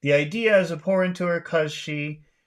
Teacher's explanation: a lot of times, we don't say the be part. We just say cause.